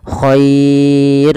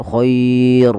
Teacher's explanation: r-nya ini tidak boleh ditebalkan tapi dibaca dengan tipis dan kita namakan dengan ro tarqiq